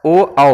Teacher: उसके बाद बात कर लेते हैं ओ औ की, तो ओ औ जो होते हैं ये भी कंठ और ओष्ठ होते हैं, यानी कंठोष्ठ कहते हैं इनको